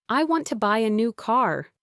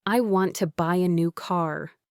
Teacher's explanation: The words want, buy, new, and car carry the most weight.